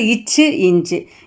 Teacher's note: நாவின் இடை அன்னத்தின் இடையை வந்து பொருந்துவதால்